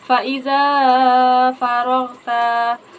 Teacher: Karena fathah yang di za bertemu dengan alif. Cara bacanya dipanjangkan dua harakat. Huruf ro dibaca tafkrim atau tebal karena bertanda fathah. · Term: mad thai